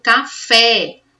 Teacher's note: O fé é mais forte, então ela vai ser classificada como oxítona, porque é a sílaba mais forte.